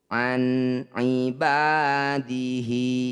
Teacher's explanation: Nun sukun bertemu ain, disebut bacaan idhar halki. Bunyi nun sukunnya baca jelas, tidak usah dengung.